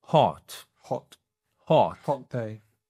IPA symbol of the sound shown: ɒ